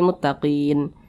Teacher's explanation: kita berwakaf tepat di huruf nun huruf nun kita sukunkan atau kita matikan